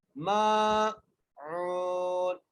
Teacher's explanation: عین کو ایک الف کی مقدار کھینچ کر اس لیے پڑھیں گے کیونکہ یہاں پر واو مدہ آ گئی ہے